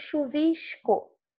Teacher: Nossa pronúncia, né, da carioquês, digamos assim, fluminense, a gente fala o S, nesse caso aqui, até chiando